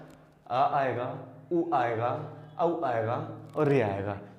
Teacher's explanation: इनका उच्चारण हम अपने जीवा के पश्च भाग, पिछले भाग की मदद से इनका उच्चारण करते हैं, इसलिए इनको पश्च भाग में रखा गया है।